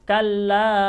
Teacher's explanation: Saya membaca lafaz kalla dengan menambahkan panjangnya sampai 4 harokat atau 5 harokat ya. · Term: mad jaiz munfasil